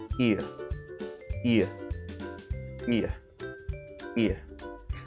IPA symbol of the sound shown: ɪə